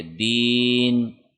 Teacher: یا مدہ ہے کیونکہ دال کے نیچے زیر ہے اور آگے یا کے اوپر جزم ہے، لہٰذا اس کو 1 سیکنڈ لمبا کریں گے